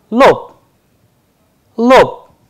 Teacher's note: If we pay attention to the devoicing of consonant at the end, ba is changing into pa. That is why the pronunciation is coming as lope instead of lob.